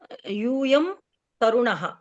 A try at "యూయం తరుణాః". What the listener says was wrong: దీర్ఘం. దీర్ఘం ఉంటుంది.